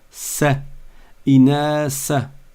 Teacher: Et j'insiste auprès de ceux qui nous écoutent d'Afrique, parce que dans pas mal de pays d'Afrique, il y a une tendance à ne pas sortir la langue et à transformer le tha en sin. Le sin, c'est une autre lettre.